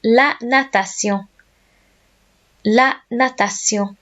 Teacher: Lots of people end up saying nation with this one and they miss out the middle syllable. So it's la, nat, a, and then shun words in English are pronounced sillon in French.